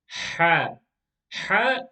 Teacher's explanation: Ha is like the letter H, but a bit more heavy, a bit more stronger. And the letter Ha is pronounced from the middle part of the throat.